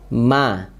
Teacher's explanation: menempelkan kedua bibir dengan lembut dan disertai gunah masuk ke rongga hidung ya Ma sifatnya Bagaimana tipis ya Ma mi mubam tipis plus